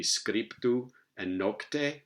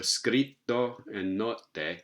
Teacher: And so what's happened here over time is that the first stop eventually took on the place of articulation of the second one, and they ended up agreeing in place of articulation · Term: geminates